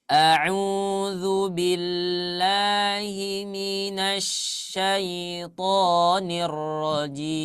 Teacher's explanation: Karena huruf shin itu hanya menggunakan apa? Tengah lidah saja. Karena makhrajnya ada di tengah lidah ya.